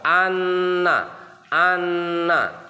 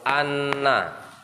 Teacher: cara bacanya ditekan ditahan dua harakat itu sabdu Ditekan ditahan dua harakat Anna Anna dua harakat itu dua ketukan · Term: tasdid